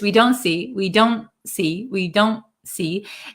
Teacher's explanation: it's called a held te where we um our tongue goes in the position of the T but we don't aspirate the T · this T in American English kind of disappears